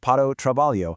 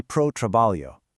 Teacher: In really fast everyday speech, if you want to say to work or para o trabalho, locals shrink that down completely. They just say pro trabalho.